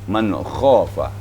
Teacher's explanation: Nah, ini jangan sampai hilang getaran. Harus ada getaran pada huruf kha, huruf halak. Ya, di pangkal tenggorokan.